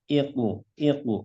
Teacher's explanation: untuk q hati-hati ya ketika sukun pantulannya agar ditebalkan iqu iqu jangan IQ tapi ditebalkan I kemudian eh nun sukun